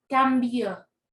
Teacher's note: como la sílaba tónica es la última sílaba, quiere decir que es aguda